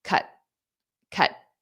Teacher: notice how I pronounce that with that very flat T